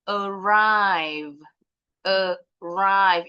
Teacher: dua suku kata penekanannya ada suku kata kedua arrive. Arrive intonasinya lebih tinggi. · Arrive intonasinya lebih tinggi. Begin arrive itu sudah pasti suku kata kedua yang lebih tinggi kalau kata kerja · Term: syllable stressing